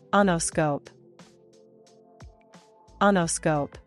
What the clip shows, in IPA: ˈeɪ nəˌskoʊp